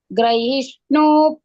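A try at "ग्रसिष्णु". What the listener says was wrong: ಗ್ರಸಿಷ್ಣು ಸಿ ಗ್ರಹಿ ಈ ಅಲ್ಲ ಮಾತಾಜಿ, ಗ್ರಸಿ ಸಿ. ಗ್ರಸಿಷ್ಣು.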